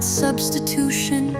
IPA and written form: ˌsʌbstɪˈtuːʃən (substitution)